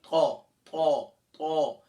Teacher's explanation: जबान की नोक और तनाया उलिया, ऊपर के सामने के दो बड़े दांत